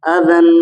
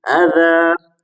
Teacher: وقف کی حالت میں ان کو اس طرح پڑھا جائے گا کہ الف کی صورت میں پڑھا جائے گا، اب یہ تنوین نہیں پڑھی جائے گی ، صرف اب تو احدن کو احدا اذن کو اذا، اس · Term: وقف کی صورت